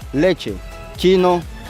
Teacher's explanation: los fonemas africados, que son aquellos en los que se produce una oclusión después de una fricción